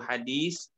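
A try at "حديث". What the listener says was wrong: Bukan sin, tapi sa.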